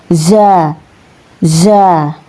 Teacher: huruf za ini ya keluar dari ujung lidah dan menepati dengan ujung dua gigi seri bawah ya